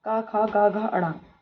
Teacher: के पांच वर्ड क ख ग घ अण कंठ ध्वनियों के अंतर्गत आते हैं